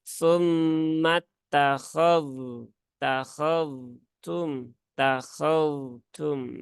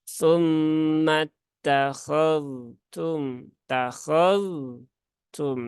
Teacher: Tunaikan sifat rokhawahnya huruf zal baru ke huruf yang setelahnya yaitu huruf ta.